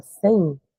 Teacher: decrescente porque tá saindo do e e indo para o i então D vogal para sem vogal um ditongo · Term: ditongo decrescente